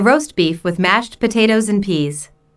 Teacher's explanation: the food order is the important information here notice also that tomato soup roast beef and mashed potatoes are compound words the stress falls on the second word in each phrase